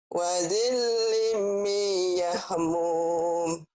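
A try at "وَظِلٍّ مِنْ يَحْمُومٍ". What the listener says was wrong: Wazillim yahmum. Idghamnya kurang ditahan ya. Wazillim wazillim ditahan idgham bigunahnya ya.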